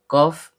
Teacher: Pangkal lidah naik ke langit-langit di atasnya